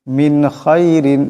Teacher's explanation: নুন সাকিনের পরে খা আসছে এখানে গুন্না করা যাবে না ইজহার হবে বেলা গুন্না পড়তে হবে